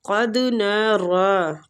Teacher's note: قد قاف مستعلیہ ہے، پور پڑھیں گے، دال پہ قلقلہ کریں گے، را کھڑی زبر کی وجہ سے تھوڑا سا کھینچیں گے۔